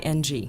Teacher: between a T and a CH sound in Chinese